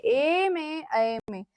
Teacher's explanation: ए और ऐ में कंठ तालु का मिश्रण होता है। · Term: कंठ तालव्य